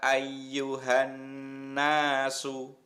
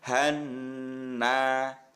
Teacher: Sama Na ini dibaca panjang kemudian yang EE huruf nanya ini selain dibaca panjang juga dibaca mendengung · bacaan ghunah itu adalah bacaan dengung ya mendengungnya dua harakat berarti agak panjang